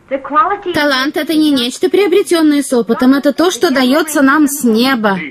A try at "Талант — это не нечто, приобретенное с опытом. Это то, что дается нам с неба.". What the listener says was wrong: Говори, произноси через рот, через рот. Нос — это для того, чтобы розочки нюхать.